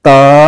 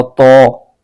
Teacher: تو یہاں یہ خیال کرنا ہے کہ تا اور تو یہ دونوں حرفوں میں فرق ہونا چاہیے۔ تا باریک آواز کے ساتھ پڑھا جاتا ہے اور تو یہ پر کر کے یعنی موٹا کر کے پڑھا جاتا ہے